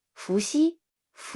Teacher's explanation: Fu is a second tone, and is pronounced with a rising voice. The pronunciation of Xi is similar to the English word si, but in Chinese, Xi is pronounced with a weaker airflow, and the tip of the tongue is more forward.